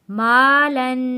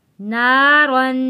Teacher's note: اور لام کے اوپر دو زبر ہے، دو زبر پر ہم غنہ کریں گے، اور دو زبر کے ساتھ الف لکھا ہے، اس کو ہم نے نہیں پڑھنا۔